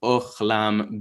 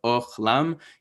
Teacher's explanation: ochlam, you have a kamatz that makes an O sound, and then you have a kamatz that makes an A sound